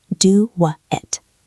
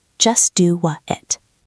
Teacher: Do ends in U. Round lips. It starts with I. Bridge them with W. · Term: W bridge